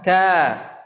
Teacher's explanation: kalau sebelumnya tipis ka maka dibaca dengan tipis pula alifnya